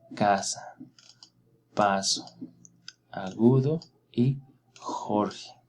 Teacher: todas estas son palabras graves o llanas porque tiene su sílaba tónica en la penúltima sílaba